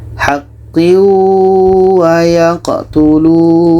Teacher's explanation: Tanwin kita masukkan ke waw dan diiringi dengan dengung. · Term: idgham bi gunnah